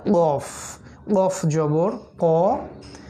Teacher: কফ আলজিবের গোড়া থেকে উচ্চারণ করতে হয়